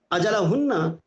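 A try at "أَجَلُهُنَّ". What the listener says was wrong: اجلوہن لام کے اوپر پیش پر رہ گیا.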